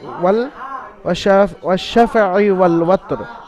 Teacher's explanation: এখানে ওয়াশ-শাফিঈ ওয়াল ওয়াতর তাড়াতাড়ি পড়ছেন, কোনো জায়গায় টান হচ্ছে না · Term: হারাকাত